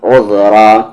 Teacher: او کو زام عذ، را کے ساتھ الف را، عذرا. ذال کا مخرج زبان کا کارنر اور سامنے والے دو دانت کا کارنر